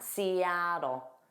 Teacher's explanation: native speakers will pronounce those T's as a soft D, and it sounds like dol.